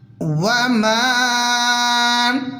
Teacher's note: میم کو تھوڑا سا کھینچ کے پڑھیں گے اس لیے کہ میم کے بعد الف بھی ہے، چھوٹی مد بھی آ رہی ہے.